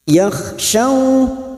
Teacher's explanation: bagian tengah lidah menempel ke bagian tengah langit-langit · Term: huruf syin